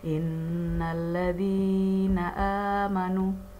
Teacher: Zi a sama nu ini mat tobi'i ya, mat asli, jadi harus panjang, sama panjangnya.